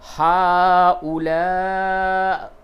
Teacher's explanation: ہؤلاء ہے وقف کی حالت میں، ہؤلاء، حمزہ کی صرف آواز نکلے گی